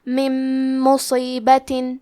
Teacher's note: ادغام کا معنی ہے حرف کو حرف میں داخل کرنا. تو ہم نون ساکن کو میم میں ملا کے غنہ اور تشدید کے ساتھ یہ حکم کو ادا کریں گے